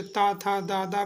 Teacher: ता था दादा बोल के देखिए दांतों में जीभ स्पर्श हो गई, तो ता वर्ग हमारा दंत से बोला।